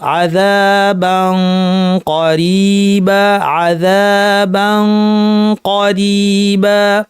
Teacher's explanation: কফ যেহেতু ভারী, গুন্নাটা অটোমেটিক ভারী হবে। যদি আপনি মাথায় রাখেন যে পরের হরফটা আমি কফ বলতে যাচ্ছি, তাহলে গুন্নাটা এমনি ভারী হয়ে যাবে।